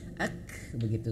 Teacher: Huruf kaf dia hamas dan juga syiddah ya, dia mengalir nafas dan juga dia tertahan suara ya. Suaranya tertahan dan anginnya keluar sedikit.